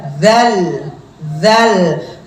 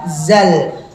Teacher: dalal dan Zai persamaannya dari makhraj mana ujung lidah ujung lidah perbedaannya pertemuannya ya kan kalau dalal pertemuannya dengan ujung lidah dengan